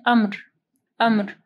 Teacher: اچھا یہاں اس کو دیکھیں زیادہ تر سب پڑھتے ہیں امر، امر نہیں پڑھنا، میم ساکن ہے امر، کیونکہ میم بھی ساکن ہے اور را بھی وقف کی صورت میں ساکن ہو جائے گی، تو 2 ساکن حروف کو پڑھنا تھوڑا مشکل ہوتا ہے.